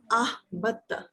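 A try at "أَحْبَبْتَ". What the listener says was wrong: नहीं बा दो मर्तबा आएगा ना। अहबब्ता, अहबब्ता, अहबब्तु,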